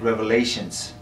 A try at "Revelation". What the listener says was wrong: No, calling it Revelations with an S is for teenage girls who wear oversized scarves and want the worship band to play Oceans. It's Revelation. I'm not saying Revelations, I'm saying Revelation.